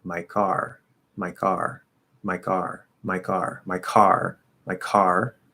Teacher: There's still a little bit of breath in the sound, but we don't really hear the breath anymore because it's a weak K.